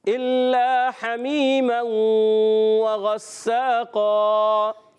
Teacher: غین ادا ہوتا ہے حلق کے اوپر والے حصے سے